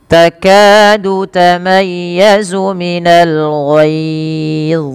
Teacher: pangkal lidah kita angkat untuk menebalkan huruf dha dan lekatkan lidah kepada langit-langit atas, karena huruf dha juga ada sifat idbaqnya.